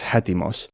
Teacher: this little apostrophe which signifies the rough breathing. That's the h sound that comes before the initial vowel. Etimos becomes hetimos.